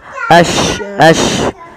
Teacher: Intisarus saut fil fam, yaitu menyebarnya suara di dalam mulut. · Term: tafashi